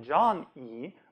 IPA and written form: dʒɑn.i: (Johnny)